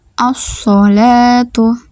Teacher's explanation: Syamsiyah hukum bacaan ini disebut juga dengan Idgham Syamsiyah cara membacanya alif lam dibaca dengan idgam atau memasukkan ke dalam huruf Syamsiyah sehingga hanya Alif yang terbaca · alif lam dibaca dengan idgham atau memasukkan ke dalam huruf syamsiyah, sehingga hanya alif yang terbaca. Ciri utamanya adalah tanda tasydid di atas huruf lam sukun atau al. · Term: alif lam syamsiyah